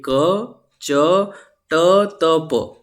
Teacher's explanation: ये जो शुरुआत वाले हैं जैसे ये के च टी पी इन सब में बोलने में कम वायु निकल रही है तो इसलिए ये सारे क्या है अल्प प्राण है है ना